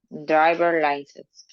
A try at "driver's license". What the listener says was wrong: Okay, remember the S. Driver's license,